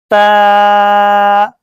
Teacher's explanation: जुबान की नोक जब ऊपर के अगले दो दांतों की जड़ की तरफ वाले आधे हिस्से से लगे तो यह ता अदा होगा